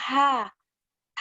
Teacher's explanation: tenggorokan bagian tengah wasthul helki satu nafas berhembus atau Hamas · tiga pangkal lidah tidak bertemu langit-langit atau istifal